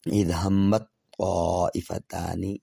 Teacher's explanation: تو ہم رواں اگر پڑھیں گے تو ظاہرہ تا کا طا میں مکمل طور پہ ادغام ہو جا رہا ہے